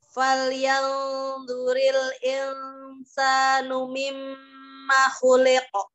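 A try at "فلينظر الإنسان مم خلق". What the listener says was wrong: Jadi disempurnakan ya. Gunnah di mim tasdid itu sempurna ya.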